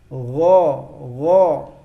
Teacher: kalau huruf ghin tidak usah ngorok seperti huruf kha. Dia lebih halus bacanya.